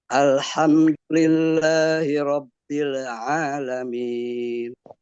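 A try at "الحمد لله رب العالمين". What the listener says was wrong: Dikasih penekanan sedikit lagi Pak, agak kurang tekan ya.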